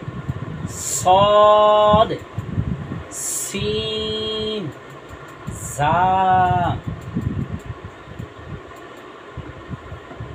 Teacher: এটা হচ্ছে 13 নম্বর মাকড়া, জিব্বার আগা সামনে নিচের দুই দাঁতের আগার সঙ্গে লাগাইয়া সদ, সিন, ঝা